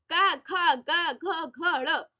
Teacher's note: ये कोमल तालव्य कंठे से आवाज आ रही है।